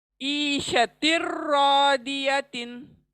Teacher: Next دو الفاظ again آئے ہیں، ایشتن آیا ہے، ایشتن اور رادیتن. ایشتن تو تن کے نون کو ہم ادغام کریں گے را میں، ایشتر رادیتن.